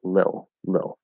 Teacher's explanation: So we're actually doing an L colored I, like the word ill, ill.